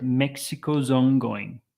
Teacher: ongoing so imagine that as one word Mexico's Ono okay so the Z links very nicely into the vowel the o sound in the next word